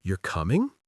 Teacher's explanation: You're coming? Question, rising intonation.